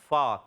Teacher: فا کا مخرج ہے اوپر والے دانتوں کے کنارے, یعنی سامنے اوپر جو بڑے بڑے دانت ہوتے ہیں ثنائے علیہ کے کنارے, نیچے والے ہونٹ کے جب تر حصے سے لگتے ہیں